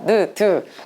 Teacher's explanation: 내 치아 바로 뒤에 닿아서 나는 현상, 나는 소리가 디귿과 니은 요런 겁니다.